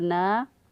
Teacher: نون کھڑی زبر نا، اس کو ایک الف کے برابر لمبا کیا